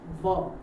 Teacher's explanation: તમારા દાંત અને હોઠ બંને ભેગા થાય છે